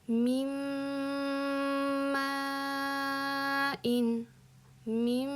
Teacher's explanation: mana bu yerdagi nunni mimga aylantirib yuboramiz va ikkinchi etapimiz bizda g'unna.